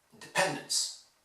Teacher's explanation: If I exaggerated, I could say that the only thing you need to hear in independence is pen. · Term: stressed syllable